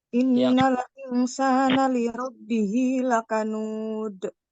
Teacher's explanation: Diakhiri dengan huruf dal, dibaca dengan qalqalah ya Ibu ya, dipantulkan.